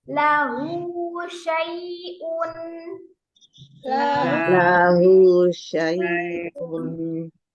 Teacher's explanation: Jadi sinnya tetap dari lidah, bukan dari kedua bibir.